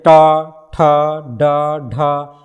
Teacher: उल्टी हुई नोक का जिह्वा का निचला भाग मूर्धा से स्पर्श करता है, ऐसी स्थिति में उत्पन्न ध्वनि को क्या कहते हैं, मूर्धन्य व्यंजन।